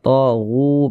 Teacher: huruf yang memiliki harakat dhammah ini dibaca panjang. Sehingga gu dibaca panjang. Mad tabi'i panjangnya 2 harakat.